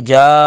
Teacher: جا پر مد متصل 3 الف کے برابر اس کو کھینچیں گے